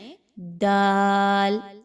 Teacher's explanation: ता की तरह जुबान की नोक को पीछे मसूड़ों के साथ मिलाएं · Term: दाल का मखर